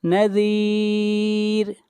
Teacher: یہاں پر را کو باریک پڑھا جائے گا